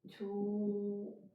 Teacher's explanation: 히읗 받침일 때는 we don't say, just drop, 말하지 않아요